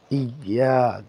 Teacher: আমরা দেখতে পাচ্ছি ইয়াতে এক আলিফ টান হবে, ইয়া। আমরা পড়েছিলাম জবরের পরে যদি খালি আলিফ হয় তাহলে এক আলিফ টেনে পড়তে হয়, তাই এখানে হামজা ইয়া, আলিফ জবর ইয়া, ইয়া, কাফ জবর কা।